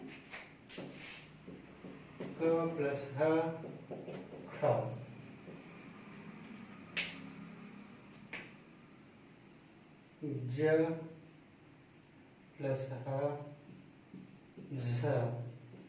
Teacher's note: अल्प प्राण ध्वनियों में जब ह जोड़ दिया जाता है तो वे महाप्राण बन जाती हैं